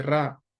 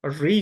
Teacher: री वास्तव में इसका उच्चारण रा की तरह नहीं होता। रा में क्या होता है? जीभ ज्यादा वाइब्रेट करती है। रा री जब हम बोलते हैं उसमें वाइब्रेशन नहीं आता है।